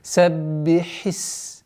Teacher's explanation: Так как у сина свойство свист, а у ха фрикативность, нужно выделять максимально четкое произношение звука ха.